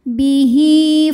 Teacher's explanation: huruf setelahnya bukan Hamzah ya bukan a bukan I atau u maka h damirnya kita panjangkan dua harakat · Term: Madah qir